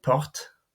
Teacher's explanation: If a word ends in an unaccented e or in es, the preceding consonant is always pronounced, but the e or the es remains silent